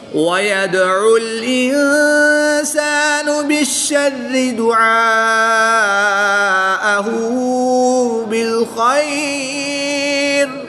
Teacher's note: عین کو حلق کے درمیان سے اور حمزہ کو حلق کے نیچے والے حصے سے ادا کر کے پڑھیں گے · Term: قریب الصوت